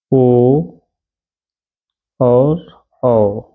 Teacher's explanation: ओ और औ यह किससे होगा कंठ और ओस्ट से